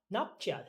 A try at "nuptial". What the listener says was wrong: Okay, it's not chal, but shall. Nuptial.